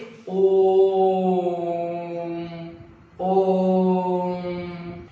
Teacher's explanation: जिन स्वरों के उच्चारण में ह्रस्व स्वर का तिगुना समय लगता है उसे प्लुत स्वर कहते हैं। जैसे ओम, मीन्स यहाँ पर हमारा क्या ट्रिक ट्रिपल समय लग रहा है, तिगुना समय लग रहा है, तो उसको हम लोग क्या कहते हैं, प्लुत स्वर कहते हैं।